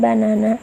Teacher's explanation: Moreover, in the word banana, the first and third syllables are unstressed, and the middle one is stressed.